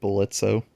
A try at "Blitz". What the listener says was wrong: The O is silent. No, I said the O. The O is silent. That's what Blitz says.